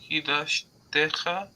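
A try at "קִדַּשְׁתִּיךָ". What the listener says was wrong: Ticha. Kidashticha. Not techa. Kidashticha. with the stress. Kidashticha. Kidashti otcha, kidashticha. Kidashti otcha, kidashticha. Kidashti otcha, kidashticha.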